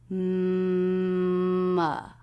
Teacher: It begins with the M consonant sound where the lips come together. M. Then we have the as in butter sound.